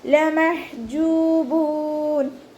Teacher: ജീമിൻ്റെ കൂടെ വാവ് മദ് വന്നു, 2 കൗണ്ട് നീട്ടിക്കൊടുക്കുക. അവസാനത്തിൽ മദ് ആരദുൽ വഖഫ് ചെയ്യുമ്പോൾ 2, 4, 6 ഹർക്കത്ത് വരെ നീട്ടി വഖഫ് ചെയ്യും. · ഹ തൊണ്ടയുടെ മധ്യഭാഗത്തു നിന്നാണ് വരുന്നത്. വസത്തുൽ ഹൽക്ക്, സൗണ്ടിനെ വ്യക്തമാക്കി കൊടുക്കുക.